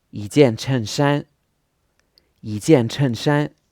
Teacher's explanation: when the number one comes before a fourth tone, normally it would be yi in the first tone, but if it comes before a fourth tone, then it changes to a second tone.